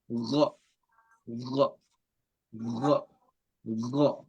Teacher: So the top layer of the throat, you have the ghain